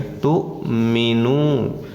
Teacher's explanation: Nah kalau minunya baru panjang, waw sukun sesudah dhamma panjangnya dua harokat namanya mad tabi'i atau mad asli · Tu di sini dijeda waw di atasnya hamzah dan baris sukun. Awas jangan dipanjangkan, dijeda saja, ya. Jangan tu minu tapi tu minu, nah gitu, ya.